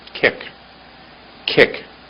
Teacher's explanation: the chest like a copying sound hard forcing out of air there's quite a hard forcing out of air